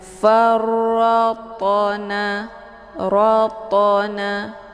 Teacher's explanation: Cara bacanya, huruf ta-nya dipantulkan dengan pantulan ringan. farratna, ratna, keluar bunyi to sekedar saja. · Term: qalqalah sughra